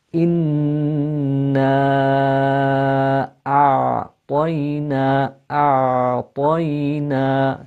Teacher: you pronounce the hamza from the bottom of the throat, and then you go to the ayn, and you have two different sounds, the hamza and then the ayn.